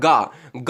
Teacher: जैसे आप गमला बोलते हो, तो आपका गा है ना, गा, आप बोल के देखो एक बार, गा गा बोलोगे तो आपके कंठ पर जोड़ पड़ेगा, यानी गले से आपका गा निकलेगा। तो जो कंठ से निकले वो कंठ हैं, तो का वर्ग सभी कंठ वाली हैं।